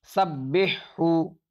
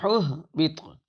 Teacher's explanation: ہا کا ہا میں ادغام نہیں ہوگا، اس لیے ہا کو الگ اور ہا کو الگ پڑھا جائے گا